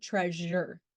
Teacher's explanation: in this case the vocal cords vibrate adding a voicing to the sound